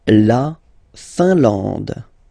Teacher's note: I-N here, nasal, un. A-N, nasal, en. And then D, final E, not pronounced.